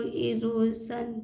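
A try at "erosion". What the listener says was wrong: तो देखिए इरोजन को इरोशन इन्होंने पढ़ा। तो चलिए सन और जन में थोड़ा सा अंतर है, और इस अंतर को जब तक ये हमारे पार्ट्स वर्ड को मैंने आज तो मैं चाहता हूँ कि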